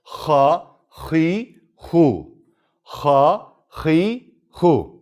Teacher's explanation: boğazımızda Ağzımızın bu birleştiği yerden çıkar